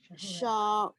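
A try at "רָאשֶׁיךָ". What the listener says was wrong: It's not a shin. It's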